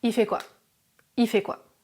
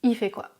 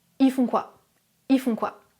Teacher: Numéro 6, le L de il disparaît souvent.